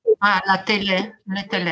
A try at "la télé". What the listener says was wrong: La télé.